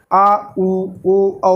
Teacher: अब पश्च भाग से आ, उ, ओ, औ बोले जाते हैं